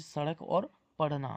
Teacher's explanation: उत्क्षिप्त व्यंजन ड और ढ